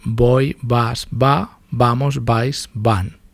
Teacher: bilabial, como una B